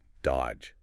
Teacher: You don't say that middle D at all. It's just dodge. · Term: silent letters